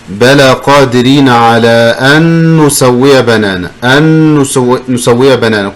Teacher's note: Combine noon with noon, just like one noon.